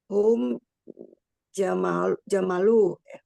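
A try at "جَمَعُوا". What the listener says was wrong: Lamnya diganti.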